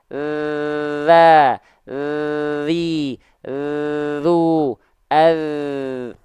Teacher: gak boleh nafasnya yang ngalir cuman suaranya aja